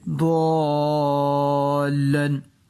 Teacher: ضاد حرف مستعلیہ میں سے اسے ہم پور پڑھیں گے، یعنی موٹا کر کے پڑھیں گے۔ الف کے اوپر مد ہے، بری مد، اس کو ہم 4-5 سیکنڈ کے لیے کھینچ کے پڑھیں گے